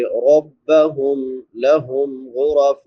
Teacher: ربہم میم ساکن پہ اظہار ہوگا، لہم میم ساکن پہ پھر اظہار ہوگا ، غرفم غین پر پڑی جائے گی کیونکہ حروف مستعلیہ میں